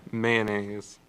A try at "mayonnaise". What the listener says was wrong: You like really emphasize the A in